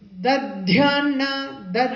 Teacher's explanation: So don't use the Mahaprana in the first word. You be careful.